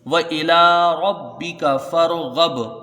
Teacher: ربک، ربک، فرغب، فا کو را سے ملا کے یہاں جلدی پڑھا جائے گا، را کو یہاں پر پڑھیں گے کیونکہ را ساکن سے پہلے زبر ہے۔ غین کو با سے ملائیں گے، یہاں پر با میں قلقلہ ہوگا